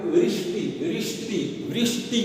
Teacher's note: मूर्धा से इसको श को बोलना चाहिए